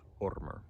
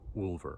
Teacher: in Old Norse, W's always disappear before O's or U's, before rounded vowels. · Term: The W is simply lost